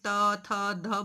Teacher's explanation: ये जो त वर्ग है हमारा ये दंत है, दांतों पर हमारी जीभ टच होती है